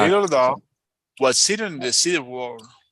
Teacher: Entonces, cuando estamos describiendo un adjetivo y una persona con una descripción, entonces sencillamente en ese caso la descripción va en tono bajo y el énfasis de ese conjunto, de ese par de palabras está en el noun, en el sustantivo